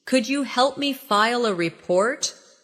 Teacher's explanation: Could you becomes could ya in natural speech.